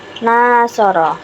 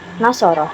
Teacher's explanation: memiliki durasi atau memiliki vokal panjang a pada konsonan Nun